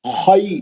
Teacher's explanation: خی لین ہو رہا، وہ یا ساکن سے پہلے خا پہ زبر ہے، لین ہو رہا ہو. خیرن، دونوں رات موٹے اچھے، اور ہا کو ساکن کر کے روک دیں.